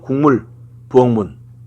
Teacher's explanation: 그래서 그 비음화 예시로 기역은 비음 앞에서 이응으로 발음되는 건데